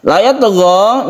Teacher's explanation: ta yang sukun disebut qalqalah sughra karena ada berada di tengah. La yatgha, ini kalau kita berhenti di sini berarti dia la yatgha ini adalah mad tabi'i.